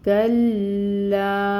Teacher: تو ہم نے لا کو اسٹریچ کرنا ہے 4 to 5 کاؤنٹس